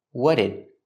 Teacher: the T in what links with the D in did, and you hear a fast D